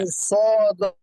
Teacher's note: আমাদের সদটা হচ্ছে ওই মুস্তালিয়া মোটা হরফ, তো মির স, আমরা যদি মির সা বলি তাহলে সিন হয়ে যায়